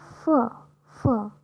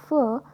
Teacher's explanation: you don't feel any vibration in your throat so this is unvoiced